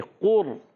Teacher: قاف پر پیش، قاف ادا ہوتا ہے زبان کی جڑ اور تالو کے نرم حصے سے، زبان کی جڑ اور تالو کے نرم حصے سے قاف ادا ہوتا ہے، قاف پر پیش ہے اور را ساکن، را ساکن سے پہلے پیش آ رہا ہے تو جو ہے را پر بھی ہو جائے گا، ہونٹ گول بھی ہوں گے، قور، ہونٹ گول بھی ہوں گے، قاف پر ہونٹ گول ہو جائیں گے۔